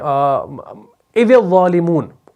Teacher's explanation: اچھا، اسی طریقے سے ایک اور لفظ ہمارے پاس آتا ہے، جیسے اذ الظالمون، اس میں آپ دیکھیں گے ذال اور ظا، سورہ انعام کے اندر آتا ہے، جیسے یہ ہے ذال کے بعد ظا آ گیا، حالانکہ ذال جو ہے آپ کا مرقق ہے اور ظا جو ہے آپ کا مفخم ہے